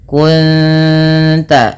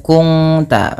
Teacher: Cara membacanya bukan kung ta, tapi menyamarkan bunyi suara nun kepada ta dan ditahan bunyi dengungannya 2 harakat. Kunta bukan kungta, nanti berbeda bunyinya. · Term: ikhfa hakiki